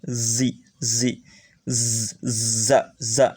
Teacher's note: Di mana makhrajnya, tempat keluar hurufnya adalah ujung lidah ditempelkan ke ujung di bawah